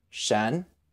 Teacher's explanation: it sounds just like Sh plus the en Shen with a rising tone